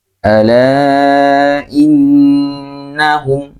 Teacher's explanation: Nah, ditekannya tidak seperti huruf-huruf yang lain. Kalau huruf-huruf yang lain ditekannya sekedarnya saja, tapi kalau nun dan mim ditekannya agak lama · Huruf nun ketika memiliki harokat syiddah, harokat tasydid, maka memiliki sifat yaitu ditekan ya, ditekan ditekan cukup lama ya, sehingga beda seperti huruf-huruf yang ditasydid yang lain. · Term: nun tasydid